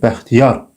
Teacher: vurğu sonuncu saitin üzərindədir. Bu fikir yanlışdır.